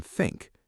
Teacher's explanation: the TH in think is unvoiced